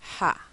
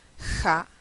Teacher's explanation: vamos a ver por ejemplo que en el Caribe El alófono que se utiliza es el ha versus el Ja de México